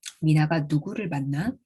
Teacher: you can notice that the WH word 누구를 sounds more prominent in the WH question. Phonetically, that prominence is realized with higher pitch or extended pitch range on the WH word.